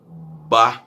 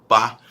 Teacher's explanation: Algumas consoantes são bilabiais, como ba, o B, o P